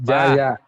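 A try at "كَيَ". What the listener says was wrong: kaya, bukan jaya. Ini yang jadi masalah. Kalau kita tidak konsen belajar, banyak huruf hijaiyah itu huruf yang sama, beda titik posisi. Di atas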